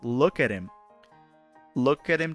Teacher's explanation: the K connects with at look at and then the T becomes like a a flap T So sound and the H drops in him so look at · he connects look with at with him to say look at him so the the K connects with at look at and then